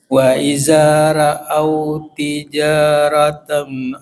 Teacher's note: wau tijaratan panjang tij ada alifnya